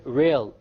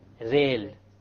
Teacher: The English R comes from the middle of the tongue, whereas the Arabic Ra comes from the tip of the tongue, along with the incisors or the gum behind the incisors.